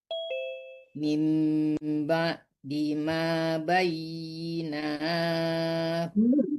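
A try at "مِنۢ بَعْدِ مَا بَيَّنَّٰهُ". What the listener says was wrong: Bayyana, bukan bayyina tapi bayyana.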